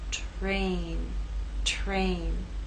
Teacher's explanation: And in this last word, T is voiceless. R begins voiceless and takes on a voiced sound as we move into A.